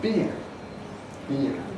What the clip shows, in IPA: biːr